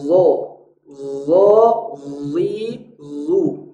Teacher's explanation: Mungkin ada kandungan bunyi Z di dalamnya tapi tidak sama. Karena zo adalah huruf yang selalu tebal. Makhrajnya adalah ujung lidah di ujung gigi seri atas. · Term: Huruf zo